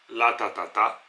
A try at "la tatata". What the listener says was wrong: La tatata. Attention, c'est un ta qui reste ta.